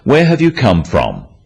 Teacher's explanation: notice also the falling tone with these questions